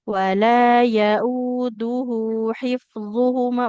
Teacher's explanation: Sebelum lanjut ke wahwa yang wala yauduhu dulu. Nah, di sini dalnya dhamma, nggak ketemu waw, nggak boleh panjang ya. Wala yauduhu hifdzuhuma, bukan hiftuhuma.